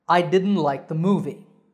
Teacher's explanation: notice that the t has become silent